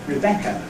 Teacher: ‘Rebecca’ begins with an unstressed syllable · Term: anacrusis